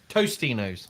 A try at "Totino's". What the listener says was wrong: It's not Tostinos. It is Totinos. There is not an S in the middle. It is Totinos.